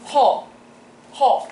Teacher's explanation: the second tone is a dropping tone but the symbol actually looks like it's rising · you're starting from your first tone point and you're dropping it down, sort of an elongated drop. Yeah. Or I guess almost to a fourth tone in Mandarin.